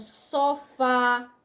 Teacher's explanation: sofá, que o fá é mais forte, então toda última sílaba tônica, ela é do grupo das oxítonas.